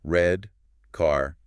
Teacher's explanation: the English R tongue pulled back, not rolled or tapped